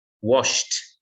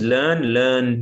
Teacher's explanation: ends with a sh sound. So our ed will sound like a t.